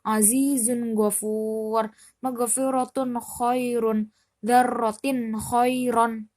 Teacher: dibaca terang, berbunyian nun. Pokoknya jelas gitu. Tidak perlu didengung, tidak perlu dimasukkan, tidak perlu di apa-apakan. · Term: izhar